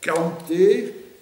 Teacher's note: la palatalisation a régressé, on est revenu à « K »